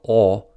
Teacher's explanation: the British back open rounded vowel /ɒ/ does not exist in American English